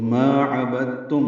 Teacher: وقفاً میم ساکن پہ اظہار شفوی ہوگا